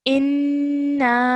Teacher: join the alif to the noon, holding that nasal sound in our nose for about 2 seconds, and then stretching that out again for about 3 to 4 seconds because of the madda.